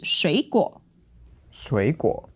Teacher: So two third tones together becomes second and third.